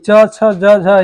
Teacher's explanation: च छ ज झ ये तालू से बोली जाती है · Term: तालव्य ध्वनियां